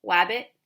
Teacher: if it was an r word or an l word they would replace that with a w word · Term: gliding